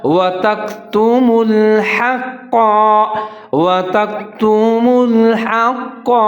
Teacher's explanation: ملا کے پڑھیں گے، وَتَكْتُمُوا الْحَقَّ، ہا کے اوپر زبر ہے، قاف کے اوپر تشدید اور زبر ہے تو ان کو پر کر کے پڑھیں گے، ادغام کریں گے، موٹا کر کے پڑھیں گے